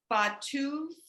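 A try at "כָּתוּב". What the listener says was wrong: So that's not a bet, that's a kaf. So katuv.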